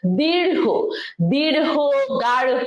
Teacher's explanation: শেষে একটা হো, হকার উচ্চারণ হবে,